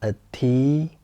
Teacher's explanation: the second tone is a rising tone. It goes up.